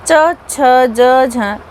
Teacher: इसके बाद स्पर्श संघर्षी। इन ध्वनियों के उच्चारण में प्रारंभिक चरण स्पर्श का होता है तथा अंतिम चरण संघर्ष का होता है। हिंदी में च, छ, ज, झ यही है।